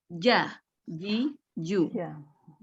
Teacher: Karena dia sifatnya jahr, jadi dia tidak ada hembusan nafas. Tidak boleh ada hembusan nafas. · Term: huruf jim